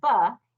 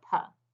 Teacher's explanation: the difference between saying can be about five milliseconds different so when you release the energy for the ba if you do that at the wrong time it turns into a puh